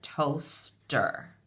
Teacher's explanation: The first syllable I hear is toast. The long O sound is in that first syllable with the O-A, toaster.